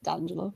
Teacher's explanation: D'Angelo, with that glottal stop in the middle